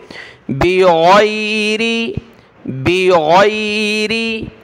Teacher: गैन को गले से निकालें, इसकी जगह आपने गाफ नहीं पढ़ना, बिग़ैरि नहीं बल्कि गैन पढ़ेंगे।